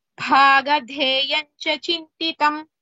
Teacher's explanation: Bhadha, both are Mahapranas